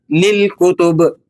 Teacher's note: جب ہم یہاں رکیں گے تو یاد رکھیں با پر حرکت ختم ہو جاتی ہے، اسے ساکن کی طرح پڑھنا ہے، یعنی للکتب۔ آخر میں با ہلکے اور صاف طریقے سے بند ہوگا، آواز کو آپ نے کھینچنا نہیں ہے، اسی طرح کھلا نہیں چھوڑنا، ٹھیک ہے، بلکہ با پر ہلکا سا قلقلہ ادا کر کے۔